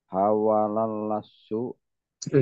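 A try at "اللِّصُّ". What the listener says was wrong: lisu bukan lasu. Lisu kasroh namanya.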